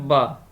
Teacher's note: ब, इसमें ओंठ भी है, ब ओष्ठ हो गया, ओष्ठ इसमें भी है, तो ओष्ठ और घोषत्व भी है, निरानुनासिक भी है, और ब अल्पप्राण स्पर्श भी है